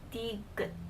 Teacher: Even though it ends with D, it doesn't have the D sound, it has more of a T sound.